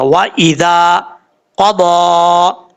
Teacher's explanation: کھڑا زبر ضا، و ایذا قضا، زال کے بعد الف ہے، یہ زال جو بغیر سیٹی کے ساتھ پڑھا جائے گا